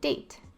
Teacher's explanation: The G comes out as a D, and they would say date.